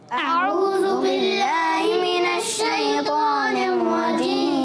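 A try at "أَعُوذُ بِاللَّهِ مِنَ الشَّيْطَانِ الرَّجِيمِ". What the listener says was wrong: اچھا، ہم نے سننے میں مجھے ایسے آیا کہ جو ہے نا ذال کو تھوڑا زا جیسا پڑھ دیا، اعوذ کر دیا، اعوذ نہیں کرنا، کیا کرنا ہے؟ اعوذ، ذال، اعوذ باللہ من الشیطان الرجیم،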